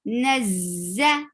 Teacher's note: Nazza, noon is short, and noon is attached with za, and za has buzzing sound. It is called safir.